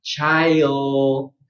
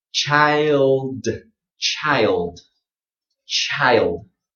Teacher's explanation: as you're saying I, your tongue will raise. I, okay, I, and then your tongue is in position to say d.